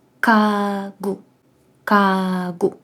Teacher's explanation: на початку вона в нас читається глухою